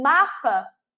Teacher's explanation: os meus lábios se tocam é uma consoante bilabial os dois lábios se tocam se fecham para formar esse som